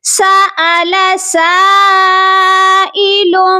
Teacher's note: اس کے بعد سین الف مد زبر سا، یہاں پر مد متصل ہے، اس مد کو ہم 3 سے 4 الف تک لمبا کریں گے کیونکہ اس مد کے بعد حمزہ ہے، یہی اس مد کی پہچان ہے۔